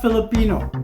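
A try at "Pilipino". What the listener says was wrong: Not F-I, okay? P. P. No, P.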